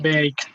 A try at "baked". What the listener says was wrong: Exactly. You pronounce it baked.